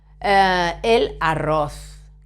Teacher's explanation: The Z at the end of word, as in the word happy, feliz. It sounds like a TH in the word thank you, for example, but without the vowel before it.